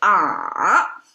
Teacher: you have a fall and then you kind of rise up a little bit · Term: third tone